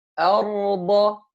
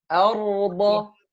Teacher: I didn't hear the راء clearly. So the راء ساكنة, it's a بيني letter. Means partial of the sound will flow.